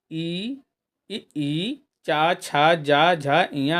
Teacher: ई, चा, छा, जा, झा, इया आदि का उच्चारण जो है तालव्य से होता है